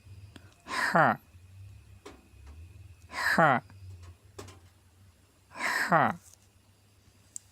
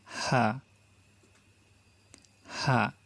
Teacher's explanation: কণ্ঠনালীর মাঝখান থেকে উচ্চারিত হয়, হা চেপে বলতে হবে। আর যে সেকেন্ড হা আছে এটা উচ্চারিত হয় কণ্ঠনালীর শুরু থেকে, এটাকে আমরা ছেড়ে দেবো, স্বাভাবিকভাবে উচ্চারণ করবো।